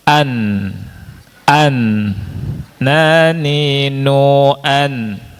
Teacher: Tertahan. Ini menunjukkan bahwa nun itu punya sifat namanya gunnah, selalu nempel. · nun dalam keadaan apapun, baik di fathah, di kasroh, di dhamma, di sukun ada gunahnya